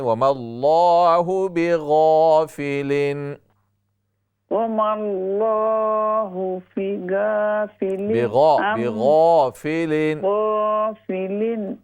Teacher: غین کے ساتھ الف کو بھی فل ماؤتھ سے پڑھیں